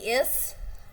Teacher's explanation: S is voiceless, but it's alveolar fricative.